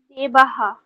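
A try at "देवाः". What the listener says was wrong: ঠিক, দেবাহা।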